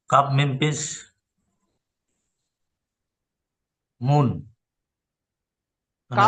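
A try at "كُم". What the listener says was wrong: কাফ মিম পেশ মুন হবে কেন? কাফ হচ্ছে ভাই, কাফ পেশ কি হয়? তাহলে মিমকে জোড়েন, কাফ মিম পেশ, কাফ মিম পেশ কুম।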